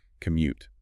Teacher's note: make sure you hit that second syllable